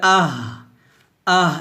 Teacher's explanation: বাতাস বের হবে খলকের শুরু থেকে